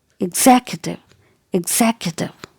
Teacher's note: the stress is given on the second syllable here